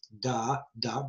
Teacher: I'm putting my tongue against the back of my front teeth. Da, da, on that ridge there.